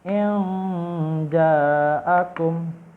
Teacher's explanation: karena ini ikhfa, maka mendengung dan disamarkan